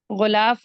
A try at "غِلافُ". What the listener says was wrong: جی ہاں دیکھیے غلاف نہیں ہے، یہ غلاف ہے. غلاف غین کے نیچے زیر. غلاف